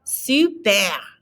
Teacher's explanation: Notice that R again is in the back of your throat.